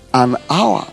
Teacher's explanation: Now, the H in hour is silent. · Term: silent H